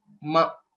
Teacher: the 5th letter, which is ma, is labial. So we'll have to close our mouth while pronouncing it.